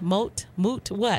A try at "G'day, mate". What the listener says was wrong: The A vowel. Mate. A.